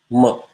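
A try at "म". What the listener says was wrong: That is very flat again. You don't say ma.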